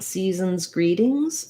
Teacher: When I'm saying season's greetings, watch out for the S's are Z sounds. The EA and EEE are both the tense E sound.